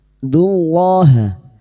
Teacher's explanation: lam jalalah yang didahului dhammah kita baca tafkim